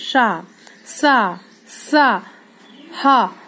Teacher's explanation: ऐसा लग रहा है कि हमारे मुंह से गरम गरम सी हवा निकल रही है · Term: ऊष्म व्यंजन